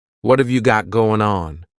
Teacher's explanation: what and have are going to be pushed together